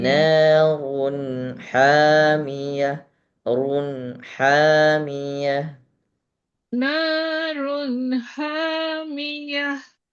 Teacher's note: Jangan sampai ada seretan huruf nun. Jangan sampai huruf nunnya runna ya. Jangan sampai ada seperti suara pantulan.